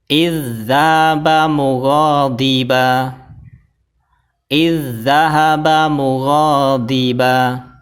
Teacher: dzal Yang pertama dimasukkan ke huruf dzal yang kedua sambil ditekan